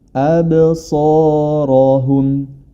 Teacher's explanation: fathah di sini dalam huruf alif atau hamzah dibaca tebal, jangan sampai dibaca abso.